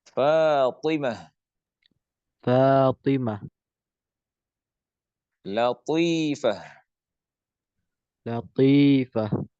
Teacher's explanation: Bedanya huruf tho itu tebal berarti diangkat pangkal lidahnya tho.